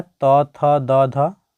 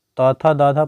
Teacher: इस सभी का जो उच्चारण स्थान है यह हो जाएगा दंत